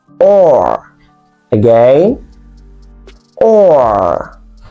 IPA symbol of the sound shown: ɔː